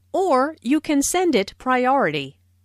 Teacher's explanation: notice the stress on or which emphasizes that there is another possibility